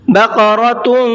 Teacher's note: ہم تھوڑا سا ناک میں آواز کو چھپائیں گے۔ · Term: اخفا